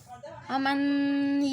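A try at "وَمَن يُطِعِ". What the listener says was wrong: ওমান না, ও মাই হবে। মিমটা ইয়াকে ধরছে, মিম আজবর মাই। ও মাই।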